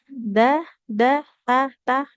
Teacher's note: Nah, jadi pastikan ketika mengucapkan huruf dal dengan huruf ta apa namanya lidahnya menempel ujung lidahnya menempel ke pangkal gigi seri sehingga tidak keluar dia tersembunyi di balik gigi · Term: makhraj huruf dal dengan huruf